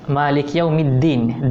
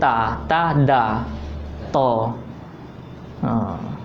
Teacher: Kok sebenarnya da tu di ni Malik Yaumiddin. Da tu di gigi. Gigi atas.